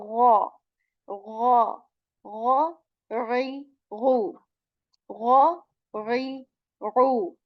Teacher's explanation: again a letter of throat, and this has this gargle sound